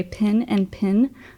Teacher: in the South we have pin and pen vowels are the same